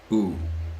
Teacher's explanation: it also starts way in the back, oh, and then it's gonna move up and forwards